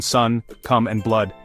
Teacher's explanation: It's pronounced with the tongue in a central position in the mouth. · strut is short and central heard in sun, come and blood.